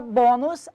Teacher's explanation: na palavra bônus, a sílaba tônica é o bo. Paroxítona terminada em us, por isso obrigatoriamente acentuada.